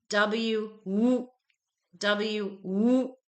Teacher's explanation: this sound gets clipped. There's no schwa on the end. We don't say w, we say w.